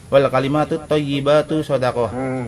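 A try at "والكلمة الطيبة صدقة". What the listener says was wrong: Jadi panjangan thayyibatu jangan. Wal kalimatut thayyibatu shadaqah gitu.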